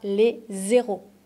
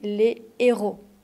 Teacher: on ne fait pas la liaison devant les h aspirés